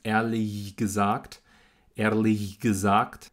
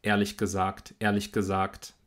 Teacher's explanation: der Konsonant am Ende von ehrlich ist der ich laut, der ist stimmlos und der macht jetzt auch dieses G stimmlos.